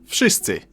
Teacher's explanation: but it seems to soften up to an F